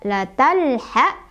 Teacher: Sebabnya karena ada alif lam bertemu dengan huruf qomariah yaitu ha. Maka cara bacanya alif lamnya dibaca jelas ya. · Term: alif lam qomariah